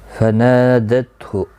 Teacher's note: نا الف مدہ ہے، ایک الف کی مقدار کے برابر کھینچ کر پڑھیں گے